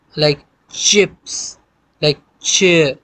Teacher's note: च लाइक चिप्स, लाइक चेयर, ठीक है। तो ये टी और शा जो है ये मिला के च साउंड बनाता है